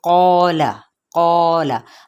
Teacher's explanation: الف اپنے ماں قبل کا تابع ہوتا ہے، تو اب الف بھی پر پڑھا جائے گا